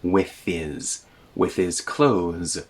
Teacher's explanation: the TH kind of goes over the H, and we don't hear a separate H sound.